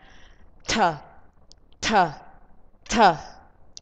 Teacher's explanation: You pronounce the without puff of air, but you pronounce t with puff of air.